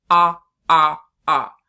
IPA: ŏ